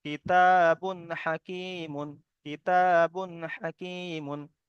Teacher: বায়ের উপরে দু পেশ তানবিন এসেছে, আর তানবিনের পরে হরুফে হালকির 6টি অক্ষরের মধ্যে থেকে এখানে হা এসেছে, তাই তানবিনকে বিনা গণ্যায় জাহির করে তাড়াতাড়ি পড়তে হবে। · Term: ইজহার